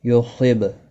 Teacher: با ساکن پر قلقلہ ہوگا